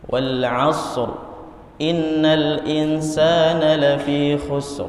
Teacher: harusnya innal insana ditahan, ada dengungan yang harus diberikan haknya